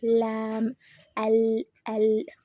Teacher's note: அந்த நாக்கோட நுனி, நாக்கோட ஓரப்பகுதி அந்த முன்னாடி இருக்க 8 பல்லுக்கு பின்னாடி ஈரில் வந்து டச் ஆகுது.